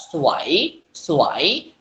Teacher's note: Tetapi sesuai dengan kategori yang kita ketahui, di sini ada 3 konsonan dan ketiga konsonan ini adalah konsonan keduanya wowen, maka wowen di sini jangan kita baca dengan bunyi w lagi, melainkan kita baca dengan bunyi vokal ua